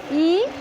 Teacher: जिसको बोलने में मुख हमारा नहीं खुलता है, बंद होता है, वो संवृत होता है